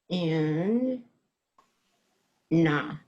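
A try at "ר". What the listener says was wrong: No, the last one's also A, and it's a resh. It's an R sound. It's Ray.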